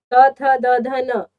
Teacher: दांतों की सहायता से ही करते हैं। जीभ आपके दांतों पर टच होती है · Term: दंत्य